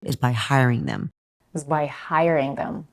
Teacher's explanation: Here, she stresses on hiring. The primary stress is on the first syllable, hiring.